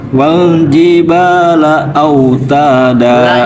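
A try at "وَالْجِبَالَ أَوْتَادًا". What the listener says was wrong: Wal jibala autada. Jangan la, au jangan begitu, jangan ditekan. Jangan wal jibala au. Jangan la, jangan langsung begitu. La au gitu. Wal jibala au gitu.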